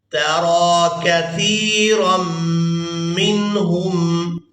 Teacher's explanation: را کو ہم نے میم شدد کے ساتھ ملانا ہے تو غنہ کے ساتھ ادا کرنا ہے